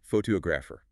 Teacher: Another great multi-syllable example is photographer, 4 syllables. The main stress falls heavily on the second syllable.